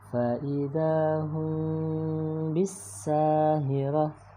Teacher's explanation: Ada mim ketemu ba, maka cara membacanya mimnya dibaca samar. Fa'idahum bisahirah ya, ditahan dan juga mendengung ke hidung ya. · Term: ikhfa syafawi